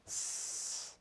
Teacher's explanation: When you speak a voiceless consonant like S in starts, your vocal cords do not vibrate. S. The S sound is a hissing sound. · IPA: /s/